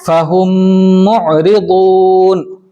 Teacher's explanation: دیکھو اس میں ادغام شفوی کی چاروں مثالوں میں ہر میم دوسرے میم سے مل رہا ہے. ٹھیک ہے, ہر میم دوسرے میم سے مل رہا ہے اور وہاں پر غنہ ہو رہا ہے · فہم معرضون میں ہم والی میم دوسرے میم سے مل رہی ہے